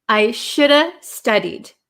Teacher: And you'll notice in American English, when we have like a V sound, should have, would have, could have, should have, could have, would have, the V kind of becomes silent and we are left with shoulda